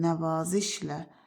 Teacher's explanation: Nəvaziş sözündə a uzanır. Nəvazişlə axırdakı lal nan nən kimi tələffüz olunur.